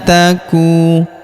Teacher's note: Huruf ku kita panjangkan dua harakat karena wau sukun di depannya